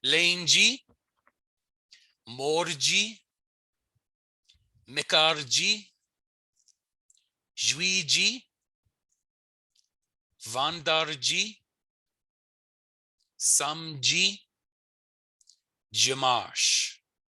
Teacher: a lot of times sounds that would be a D in French become a J in Michif